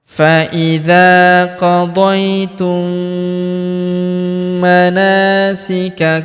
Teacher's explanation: huruf na kita panjangkan 2 harokat karena terdapat alif di depannya